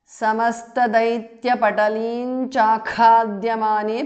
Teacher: समस्तदैत्यपटलीं चाखाद्यमाने because of sandhi. Anuswara changes to ny, which is the nasal of the cha varga.